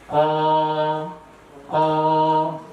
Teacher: Itulah keluarnya huruf qaf. Ya, huruf qaf itu keluar dari pangkal lidah. Yang pangkal lidah itu naik ke langit-langit.